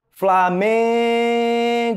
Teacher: vocês perceberam que o Man né fica mais forte mais intenso é justamente porque o Man é a sílaba tônica da palavra Flamengo